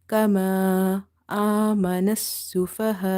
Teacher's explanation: after kama alif as a madda, you see the hamza in the next word. So what you will do here, 2.5 up to 2.5 alif you will stretch. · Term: matte munfasil